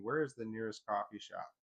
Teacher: with the pitch lowering on shop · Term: falling inonation